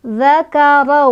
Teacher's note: Khalaqadza, khalaqadzakara. Ra dibaca secara tafkhim, tafkhim. Karena ro-nya barisnya fathah. Cara bacanya ditebalkan.